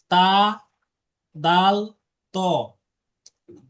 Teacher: জিহ্বার আগা সামনের উপরে দুই দাঁতের গোড়ার সঙ্গে লাগায় উচ্চারিত হয় তা দাল ত